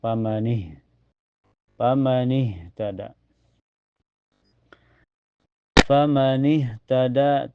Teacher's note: Setelahnya ini ada hak sukun mutlak ya. Awas makhraj ha itu keluar dari tenggorokannya sejajar dengan hamzah